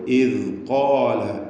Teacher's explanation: നാവിൻ്റെ അറ്റം അതിൻ്റെ ലേശം മുകളിൽ നിന്ന് മേലെ മുൻപല്ലിനോട് ചേർത്തിട്ടാണ് ദാൽ ഉച്ചരിക്കുക.